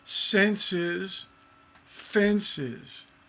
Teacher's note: the stress is on the second to the last syllable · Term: feminine ending